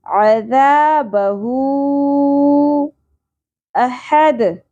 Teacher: اس مد کو ہم تین الف کے برابر کھینچیں گے، جس کو ہم مد منفصل کہیں گے